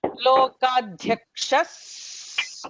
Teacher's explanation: Because of this visarga followed by a sa, there is an emphatic sa.